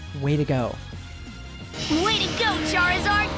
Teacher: A common reduction that happens in native English is when the preposition to sounds like a d sound.